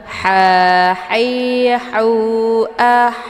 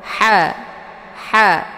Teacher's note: kecil jadi letak posisinya di tenggorokan bagian tengah Ha ah jadi cara bacanya dengan dialirkan dan ada desis angin yang agak samar-samar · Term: ha kecil